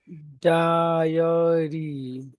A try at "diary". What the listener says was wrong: you have to repeat that e from die. Okay, so it's not die a re, it's die e a re. You repeat that sound to separate the